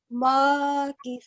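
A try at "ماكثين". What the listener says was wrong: Makithina. So sa. It's not sa. If you're saying sa, your upper teeth and lower teeth should touch, which is a wrong way of saying this. Just make sure your tongue is in the middle and the tongue is touching the upper two teeth. So makithina.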